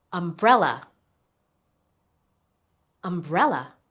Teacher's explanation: Do you hear the stress? It's on the second syllable.